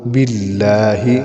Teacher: اعوذ اعوذ باللہ، لفظ اللہ کے لام سے پہلے زیر ہے اس لیے اس کو باریک پڑھیں گے۔ باللہ من الشیطان، من الشیطان، بعض لوگ اس کو پڑھتے ہیں من الشیطان، من الشیطان، یہ ہے من الشیطان، من الشیطان الرجیم، را کے اوپر زبر ہے، اس کو پڑھیں گے موٹا، الرجیم۔